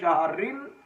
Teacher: وقف کی صورت میں اس را کو ہم موٹا کریں گے